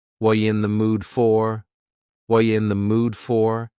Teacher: What are you in the mood for? The word are is gone. And the word you has been reduced to yah. So when we link together, what and you super fast.